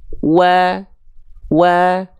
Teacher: kedua bibir dengan posisi maju diucapkan seperti mengucapkan huruf u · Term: huruf wau